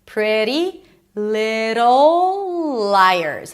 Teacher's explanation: Pretty little. Flap t and a dark l. So imagine like there is an o in between.